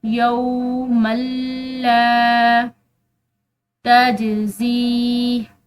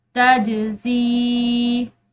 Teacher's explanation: جیم جو ہے یہ حروف قلقلہ میں سے ہے تو ہم اس کو ہلاتے ہوئے پڑھیں گے